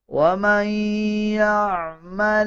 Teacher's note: نون کے اوپر جزم ہے اس کے بعد یا شد والا آ رہا ہے غنہ کیا جائے گا